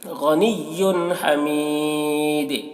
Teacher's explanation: یہاں پر تنوین کے بعد حروف حلقی میں سے ہا ہے تو یہاں پر اظہار ہوگا، تنوین کو جلدی پڑھیں گے. غنی حمید یہاں پر حمید دیکھیے دال کے اوپر سکون آ رہا ہے اور یہ وقف کی وجہ سے آ رہا ہے تو حرف مد یہاں پر یا ہے.